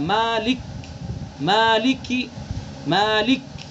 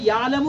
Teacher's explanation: लेकिन मालिक के काफ को हम अदा कर रहे हैं तो वो जल्दी से अपने मखरज से अदा नहीं हो रहा है, जमाव के साथ अदा हो रहा है।